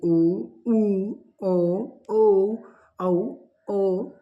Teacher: जिन स्वरों के उच्चारण में ओष्ठ वृत्ताकार में हो जाते हैं वे स्वर वृत्ताकार कहलाते हैं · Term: वृत्ताकार स्वर